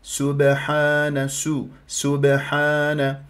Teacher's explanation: لا بد ان اضم الشفاه ولا تسحب لي هذه الضمه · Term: السين المضمومه